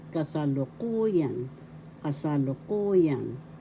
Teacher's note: First syllable ka, second syllable sa, third syllable lu, fourth syllable ku, fifth syllable yan. The fourth syllable has the accent, so you pronounce it kasalukuyan.